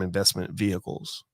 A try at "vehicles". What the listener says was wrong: you pronounce the h so harshly you're like vehicles